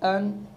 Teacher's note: नून साकिन को बग़ैर गुन्ने के ज़ाहिर करके इज़हार करके पढ़ेंगे। नून साकिन को अपनी आवाज़ में, यानी हमज़ा नून ज़बर अन करने के बाद आगे अगला हर्फ पढ़ेंगे, तो इसको कहते हैं इज़हार।